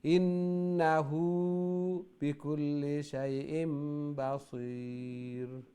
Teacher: ইনো উল্টা পেশ আছে নুনো গুন্না হইব